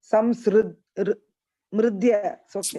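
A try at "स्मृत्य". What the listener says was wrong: Smritya. Itya. Itya. The ta is there.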